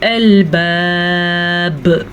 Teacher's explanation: वक्फ की वजह से बा साकिन होगी तो कलकला होगा